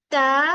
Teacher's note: हुफ नितया कहते हैं जो हमारे जो टिप ऑफ द टंग है वो ऊपर वाले दांतों के रूट्स में जाके लगे